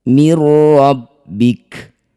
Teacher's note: Mirbika karena dihentikan maka huruf terakhir kaf ini kita sukunkan. Mirbik munculkan sifat hams atau memercikkan udara dari lisan